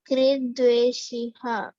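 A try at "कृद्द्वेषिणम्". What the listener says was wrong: Actually, it is wrongly printed. It is nam. Dveshi nam. Okay, not ham. It is nam. Dveshi nam.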